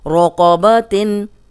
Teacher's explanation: قوف موٹا، را پہ زبر ہے، را موٹی